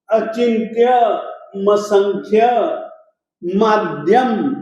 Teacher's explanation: ये म अधूरा था, अनुस्वार था और इसमें असंख्यम का अ जुड़ गया